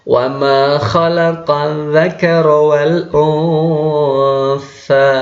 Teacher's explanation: nun sukun bertemu dengan huruf tha, maka dia disamarkan dan didengungkan 3 harokat. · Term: ikhfa hakiki